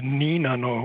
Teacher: it's given as nano with an n instead of an l